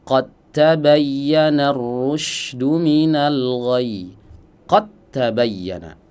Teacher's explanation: yang bertemu dengan huruf ta berharakat dan keduanya makhrajnya sama ya. Dal dan ta makhrajnya sama ujung lidah bertemu dengan pangkal gigi seri bagian atas. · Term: idgham mutajanisain